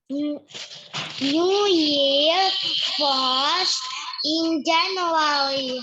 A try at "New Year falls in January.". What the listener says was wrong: Yes, sekarang bunyinya disambung.